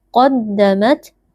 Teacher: qaf huruf tebal kita baca dengan mengangkat pangkal lidah